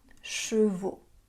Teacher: la diphtongue AU s'est transformée en O qu'on prononce aujourd'hui en français standard